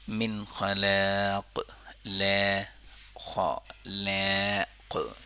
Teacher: ٹھیک ہے، خلاق قلقلہ ہوا آخر میں، یعنی خا بھی اب پر پڑھتے ہیں خا من خلاق، لیکن خلاق نہیں کریں گے. صرف خا اور قاف کو پر پڑھنے، لا کو نہیں